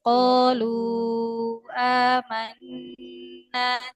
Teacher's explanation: Diulang dari qalu, lu-nya panjang. Lu-nya panjang 4 harokat.